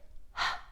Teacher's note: a whisper sound please do not put a uh on this sound